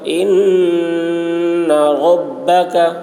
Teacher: ان مشدد ہے، نون مشدد غنہ ہوگا ، ان ربک، رو پر ہوگی، کاف کی آواز باریک ہوگی،